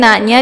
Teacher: dibaca panjang dua harakat, yaitu ada baris fatah tegak pada huruf na disebut dengan mad th'i muqaddar.